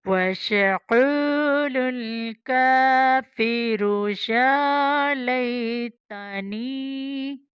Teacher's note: یا کو لمبا کرنا ہے کھڑی زبر کی وجہ سے